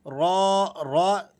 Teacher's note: را جب اس پر زبر یا پیش ہو تو را موٹی پڑھی جاتی ہے